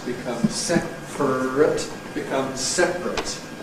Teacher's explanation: But notice that the adjective is then a candidate for compression, because we go through the process of having [ər] becomes [r̩], compresses to [r] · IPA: ˈseprət